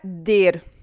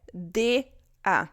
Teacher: Não é DER, é DA. O R, ele tem esse somzinho de A, se chama schwa.